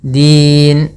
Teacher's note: ujung lidahnya nempel gusi atas. Din atau di antara gusi atas dan gigi sari. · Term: dal